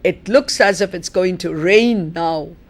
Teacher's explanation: The nucleus is rain.